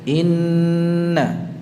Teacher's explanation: Ingat, i-nya jangan melandai atau ada cengkoknya. Tidak, langsung.